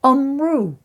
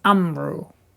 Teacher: And the grammar note is we have a kamatz rule above, which proposes in a closed syllable, usually the first, the kamatz becomes a short O sound